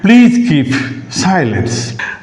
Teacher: The sentence begins with a low pitch and gradually rises off. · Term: rising tone